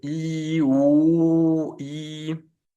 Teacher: además de que estamos redondeando los labios para la U, estamos trayendo la lengua hacia adentro de la boca, mientras con la I la estamos mandando hacia adelante